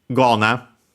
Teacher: Kona becomes voiced here because it's the second word part of a compound and of strictly Japanese origin that more often than not happens to those.